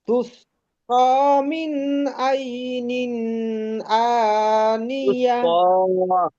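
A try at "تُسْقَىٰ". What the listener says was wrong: আচ্ছা, এই তুস কটা একটু টান হবে।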